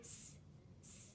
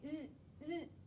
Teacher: an unvoiced sound of S and a voiced sound that says Z at the end. So we have our voiced sound, our unvoiced sound, unvoiced, which which means we did not feel it.